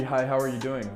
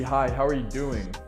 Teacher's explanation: see how it kind of goes down at the end · your voice is pretty even all the way through to the end